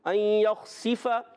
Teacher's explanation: یہاں پر بھی ایک الف کا غنہ کریں گے، ان یخسف، خا کو پر رکھیں گے، حرف مستعلیہ میں سے خا الگ کے اوپر والے حصے سے ادا ہوتا ہے، ان یخسف، سین کو سیٹی کے ساتھ باریک پڑھنا ہے، اور فا کی زبر کو ہم نے کھینچنا نہیں، یا سین کی زیر کو ہم نے کھینچنا نہیں، اس چیز کا بھی خاص خیال رکھنا ہے۔